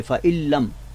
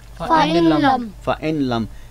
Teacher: लेकिन हमने नून साकन को लाम में इदगाम कर दिया